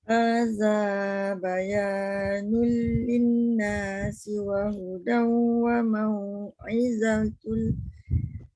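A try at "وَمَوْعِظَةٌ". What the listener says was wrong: Jangan za. Wa mau'izatul dha.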